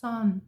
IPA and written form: sɒn (son)